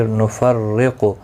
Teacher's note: قاف مستعلیہ ہے، پر پڑھا جائے گا۔ بین، بی یا لین ہے، تھوڑا نرمی کے ساتھ کھینچ کر ادا کریں گے، نہ کو کھینچنا نہیں۔